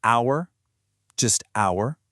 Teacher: In the word hour, that H at the beginning, gone.